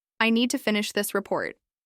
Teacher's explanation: All the words were equally loud and evenly spaced.